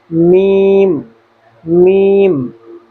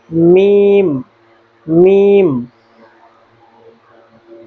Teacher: اسی طرح حرف میم جو ہے یہ دونوں ہونٹوں کے خشک حصے سے ادا کیا جاتا ہے